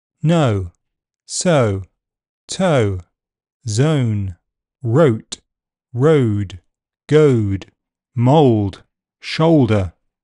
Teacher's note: moves from a central mid position to a near close near back position o the first part of the diff thong is unrounded uh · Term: diff thong vowel sound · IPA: /əʊ/